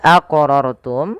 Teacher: wajib kita pantulkan pada lafal huruf qof karena ia termasuk daripada huruf-huruf qalqalah